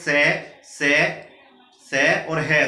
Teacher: से और है, तो ऊष्मा बाहर निकलती है, इसलिए इनको बोलते हैं ऊष्मीय व्यंजन।